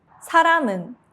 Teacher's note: The 미음 connects smoothly into the next vowel.